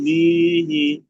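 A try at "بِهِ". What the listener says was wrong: বি টান হয়ে যাচ্ছে, বি টান হবে না, বিহি, বিহি, যেমন বিহি।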